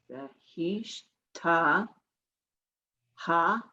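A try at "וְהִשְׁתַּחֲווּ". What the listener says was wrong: That's a chet. You have to hear that guttural.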